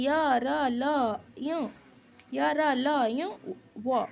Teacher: इनका उच्चारण जीभ, तालु, दांत और ओठ के परस्पर सटने से होता है, लेकिन कहीं भी पूर्ण स्पर्श नहीं होता है। ठीक है, थोड़ा सा सटने से, जैसे कि जीभ, तालु और दांत के परस्पर सटने से होता है, पूरा पूर्ण स्पर्श नहीं होता है। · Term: अंतस्थ व्यंजन